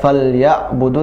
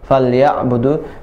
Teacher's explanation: di ayat ini juga ain dibaca tawassut atau bainiyah, pertengahan, tidak falyabudu, tidak tertahan, falyabudu, tidak juga mengalir banget, falyabudu ya, tapi dia bertengahan, falyabudu, ya'budu ya.